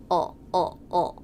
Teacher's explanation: I'm really just making one sound, and it's the dark sound of the dark L.